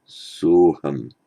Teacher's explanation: When, for example, it's followed by a short a, the visarga remains but then becomes o by sandhi. So sa, aham means I am he, becomes by sandhi soham.